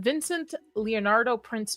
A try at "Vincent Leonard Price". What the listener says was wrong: Yeah, it's not only not Leonardo, it's not Prince either.